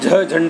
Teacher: सघोष महाप्राण में झ झंडा वाला आता है, उसको बोलने में थोड़ा अधिक ऊर्जा का क्षय होता है।